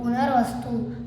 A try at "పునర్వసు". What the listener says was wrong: స్తు కాదు, పునర్వసు.